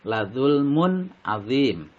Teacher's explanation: Ladzulmun, mun ini dinamakan bacaan idhar karena tanwin bertemu dengan huruf ain, dibaca jelas. Jadi jelas suara tanwinnya, yakni suara n, dan tidak mendengung